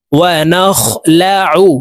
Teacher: আইন হরফকে হলকের মধ্যখান থেকে চাপ দিয়ে উচ্চারণ করব, কারণ আইনের মখরাজ হলকের মধ্যখান থেকে হবে।